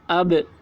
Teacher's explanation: اب یہاں پر دیکھیے با یہ حروف قلقلہ میں سے ہے اور با کے اوپر جزم ہے تو اس میں قلقلہ ہوگا۔ جیسے اب، یہ آواز با کی آواز جو ہے با میں آواز ٹکرا رہی ہے، اسی کو قلقلہ بولتے ہیں